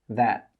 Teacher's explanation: You can see when I make that final T sound, the air doesn't come out of my mouth.